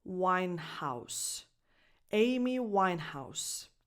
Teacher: the last S has a voiceless S sound, like in the word class.